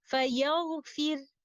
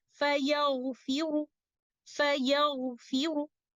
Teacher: In the next example, فَيَغْفِرُ, when I choose to stop by applying the rule of sukun al-mahab or pure sukun, The letter Ra will be recited as a light letter or with tarqiq like this. فَيَغْفِرْ.